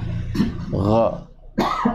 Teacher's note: Jadi tidak boleh seperti huruf kha, karena huruf kha itu mempunyai sifat hamas, sedangkan huruf gha tidak. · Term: sifat jahar